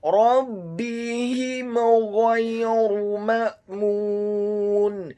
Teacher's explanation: dibaca dengan jelas, izhar syafawi, tidak boleh digunakan huruf mim yang sukunnya